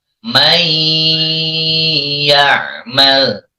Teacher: Masukkan ke ya, may ya'mal, serta ditahan. Nyebutnya didengungkan dan ditahan. Tidak boleh tergesa-gesa.